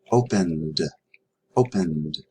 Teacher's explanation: The sound is n. N is voiced. Voiced goes with d.